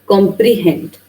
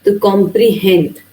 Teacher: Consists of three syllables where the first two are unstressed and the last one is stressed. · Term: anapest